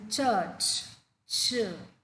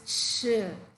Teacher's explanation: the tongue moves towards the roof of the mouth all right and then towards the front part and then there is friction we can actually feel the friction when you say the sound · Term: CH sound